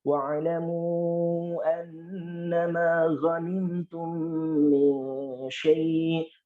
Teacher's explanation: wa'lamu tadi ada wawu itu di 2 bibir